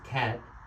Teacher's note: la a es una a abierta y la lengua va hacia abajo